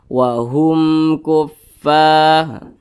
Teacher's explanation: Nah, maka wahum ini hukumnya izhar syafawi. Jadi dibaca jelas, tidak didengungkan. Jadi jangan ditahan suaranya, jangan dipanjangkan, pendek saja.